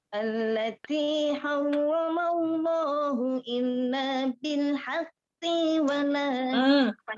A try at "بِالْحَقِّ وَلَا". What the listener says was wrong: Kenapa dipanjangan? Jadi kurang cepat aja mungkin.